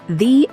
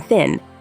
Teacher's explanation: the th sound voiced as in the and unvoiced as in thin